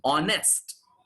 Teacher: there is no h sound there is no her sound